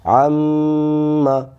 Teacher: کسی بھی جگہ پر نون یا میم کے اوپر آئے تو اس نون اور میم میں ایک الف کے برابر غنہ کریں گے